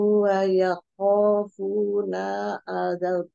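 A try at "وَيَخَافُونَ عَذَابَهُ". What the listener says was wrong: Afunanya pendek aja. Wa yakhafuna azabah.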